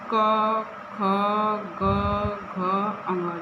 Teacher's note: इनका उच्चारण स्थान कंठ होता है, कंठ जो बीच गले के बीच का भाग होता है, जहाँ से हवा आती है बिना अवरोध के, ओ जैसे क आप अपने मुंह से बोलिए, क ख ग घ अंग, देखिए बीच में कहीं अवरोध नहीं हो रहा, सीधे गले से आवाज़ आ रही है। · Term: क वर्ग